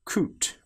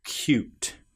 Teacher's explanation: What often happens here is we get the sound of the y before the vowel and after the very first consonant